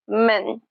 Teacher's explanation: You can also pronounce it with a hold T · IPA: mən'